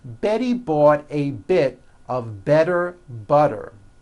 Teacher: all the T's are pronounced as D's because they fall between vowels.